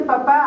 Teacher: es el fonema P, que es un fonema descrito como fonema bilabial oclusivo sordo